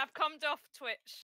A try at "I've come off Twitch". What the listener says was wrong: I've cummed off Twitch. No, that sounded like I've cummed off Twitch.